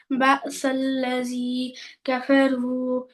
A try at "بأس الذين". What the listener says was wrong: الذي नहीं है بأس الذي ना नून भी है ना